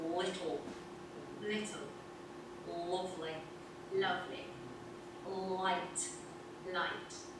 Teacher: words that begin with an L should be light, but northerners make it dark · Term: darken your light L's